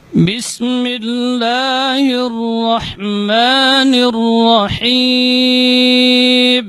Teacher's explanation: Ya, itbaq syafatain inda nutqi ba. Jadi merapatnya kedua bibir ketika mengucapkan huruf ba itu lebih kuat dibandingkan huruf mim